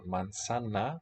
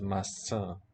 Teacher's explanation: Manzana, nice and conservative, preserving 3 syllables, versus maçã, just nasalization on the second, a total of 2 syllables.